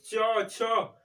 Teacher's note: संघर्षीय व्यंजन मतलब अधिक रगड़ाव हो